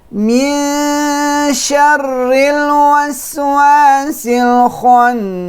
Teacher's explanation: Don't put the tongue on the noon. The tongue should be on the sheen, but do not pronounce yet. Keep the position of the mouth on the sheen until the ghunna is complete.